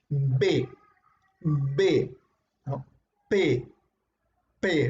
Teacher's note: ves que tus labios se juntan no y botan un fuerte aire para poder expulsar el sonido de cada una de costas no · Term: bilabiales